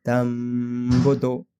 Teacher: اپنے ہونٹوں کو tightly press نہیں کریں گے اخلاب میں، صرف جو ہے ہمارے ہونٹ ٹچ ہوں گے، ٹھیک ہے، اور ہم غنہ کریں گے